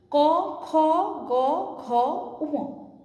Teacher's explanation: যেহেতু কোমল তালুতে লাগছে জিভটা, জিভের শেষ অংশটা যেই জায়গাটায় লাগছে সেটা হচ্ছে কোমল তালু, সেই কোমল তালুটাকে তালুতে লাগছে দেখে এটাকে স্নিগ্ধ তালব্য বর্ণ বলা হয়। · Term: কণ্ঠবর্ণ